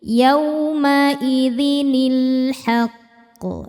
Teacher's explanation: Hamzah wasal enggak dibaca kalau di tengah.